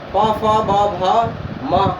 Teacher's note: प फ ब भ म, इनका उच्चारण स्थान क्या होगा, ओष्ठ